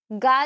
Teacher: घोष है अल्प प्राण है स्पर्श है कंठ व्यंजन है